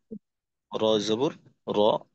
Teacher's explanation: এখানে র মোটা হবে কারণ জবর আছে